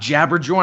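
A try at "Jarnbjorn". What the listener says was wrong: It's Yarnbjorn, man. Jabberjorn. It's Yarn. They're pronounced as Y's, man.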